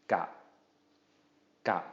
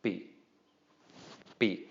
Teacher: Again, all of these are short low tones because of the middle class consonant and the short vowel.